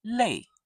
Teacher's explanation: Can you hear the fourth tone? Sharp, short, and down.